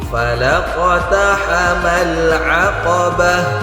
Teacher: Hames itu mengalirkan udara. Harus kedengaran udaranya.